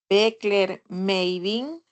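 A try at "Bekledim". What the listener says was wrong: Midim, Beckler Midim, Beckler Midim, Midi, Midic, no hay ninguna E, Midic, ¿vale?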